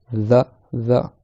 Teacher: c'est le bout de la langue qui vient se placer sous les dents du haut. Et l'air, il passe entre la langue et les dents du haut. The. Donc il faut vraiment absolument sortir le bout de la langue des dents un petit peu, sinon la lettre ne se prononcera pas bien.